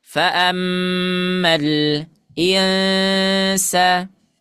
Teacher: dibaca terbuka sedikit mulutnya tapi ada gunahnya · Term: ikhfa